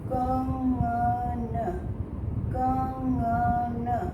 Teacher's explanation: ग के ठीक पहले अनुनासिकता आ रही है, यानी नाक से आवाज़ निकल रही है। तो ग के ठीक पहले, क के बाद और ग के पहले इंग जैसा मैं प्रोनाउंस कर रही हूँ। तो क्योंकि ग जो है क वर्ग का एक वर्ण है, इसलिए ग के ठीक पहले मैं क वर्ग का ही 5वां वर्ण ग का प्रयोग कर सकती हूँ।